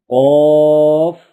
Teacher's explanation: Root of tongue touching the soft palate